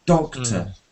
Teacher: doctor is stressed on the first syllable.